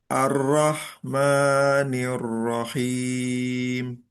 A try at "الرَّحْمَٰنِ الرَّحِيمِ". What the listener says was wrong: Nah, di rohnya sedikit dialirkan lagi. Ar-Roh gitu. Ar-Roh.